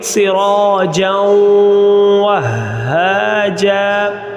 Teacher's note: یہاں جیم تنوین ہے اور جیم کے اوپر جو تنوین ہے اس کے فوراً بعد حروف یرملون میں سے واو آ رہا ہے تو اس لیے یہاں ہم ادغام مع الغنہ کریں گے